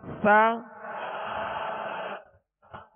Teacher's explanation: سا کو نرمی سے پڑھیں گے. اس میں سیٹی کی آواز بالکل پیدا نہ ہو, نرمی سے ادا کریں گے.